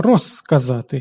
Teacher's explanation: Бо к глухий, своєю глухістю він впливає на з та оглушує його. · при вимові кінцевий «з» перед глухими теж стає глухим, уподібнюється до «с». Розказати.